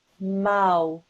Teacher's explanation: when you see a waw with a sukoon and before it is a fatha, that is known as a waw lean. And then the sound that that makes is an ow sound. So this becomes mau.